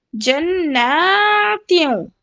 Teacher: جناتیوں، جنتیوں نہیں پڑھ سکتے آپ کیونکہ نون کے اوپر مشدد ہے، اور غنے کے ساتھ کیا کرنا ہے، کھینچنا ہے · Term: غنہ